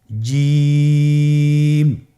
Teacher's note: জিহ্বার মধ্যখানটা লক্ষ্য করুন এবং তার বরাবর উপরে তালুর সঙ্গে লাগান, এরপর হরফটি উচ্চারণ করুন, দেখবেন হরফটি শুদ্ধভাবে উচ্চারিত হবে।